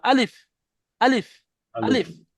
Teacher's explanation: আপনি unmute mute করে নেবেন মাইকটা বন্ধ করে নেবেন হুম দেখেন এখানে বলেন আলিফ থেকে কত আলিফ পরিমাণ টান দিয়ে পড়তে হবে এক ভুল হয়েছে আলিফের নিচে এখানে টিকের চিহ্ন আছে অর্থাৎ আলিফকে এক আলিফও টান দেওয়া যাবে না একটুও টান হবে না